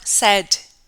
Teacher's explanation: So the word say is produced with a diphthong, but in the past we just say said, okay, with just one sound